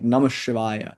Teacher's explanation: The Namaha melds with the Sa sound